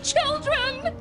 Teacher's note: A T paired with the esh creates a ch sound for words like Children!